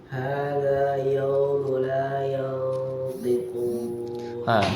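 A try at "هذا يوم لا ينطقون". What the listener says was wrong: Tebalkan sedikit huruf qa-nya. Hadza yaumu la bukan ya. Bedakan ya sama yaw. Hadza yaumu la yantiqun.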